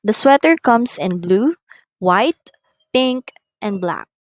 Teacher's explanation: the intonation as it rises and falls down at the end of the statement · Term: rise and fall intonation